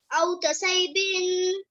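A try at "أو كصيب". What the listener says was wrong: तसय्यिबिन तसय्यि, सही पढ़ें इसको। नहीं, गलत पढ़ा। कसय्यिबिन जोड़ कर करें एक दफा लाजमी। हमजा वाव ज़बर औ, काफ ज़बर का। हमजा वाव ज़बर औ, जोड़ करें। हाँ काफ ज़बर का औ का नहीं पढ़े, बस सिर्फ आगे जोड़ कर स्वाद या ज़बर स्वई, कसवई या ज़ेर कसवई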